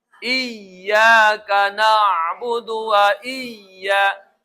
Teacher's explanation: Iyaka na'budu wa iya iya ya-nya ditekan dua ketukan kayak mad thobi'i itu.